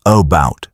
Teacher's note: The first vowel becomes relaxed and unstressed.